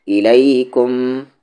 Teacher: میم پر تشدید ہے، غنہ ہوگا